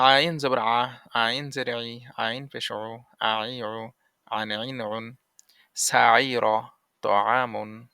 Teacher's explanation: আইন হলকের মাঝে হতে গলা চেপে আদায় হবে